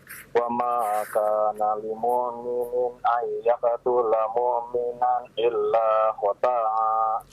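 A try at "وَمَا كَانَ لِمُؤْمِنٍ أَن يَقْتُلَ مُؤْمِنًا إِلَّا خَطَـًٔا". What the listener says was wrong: Lihat panjang pendeknya. Ya. Ulang kembali. Wa ma kana lil mu'minin ay. Itu ada idgham bi gunna, ditahan 2 harakat. Illa khata'a.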